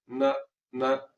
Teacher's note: یہ والا نون جو آپ کو نظر آ رہا ہے، نون دبت نا، نون دبت نا، تو اس کو حرکت کے ساتھ جب ہم پڑھیں گے تو اس کی آواز ناک میں تو جائے گی نہ نہ، مگر یہ آواز لمبی نہیں ہوگی، اس لیے کہ یہ غنہ اصلی ہے۔